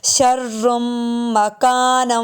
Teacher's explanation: شرم کے آخر میں را کے بعد میم کی آواز آئے گی، اس کو میم سے جوڑیں گے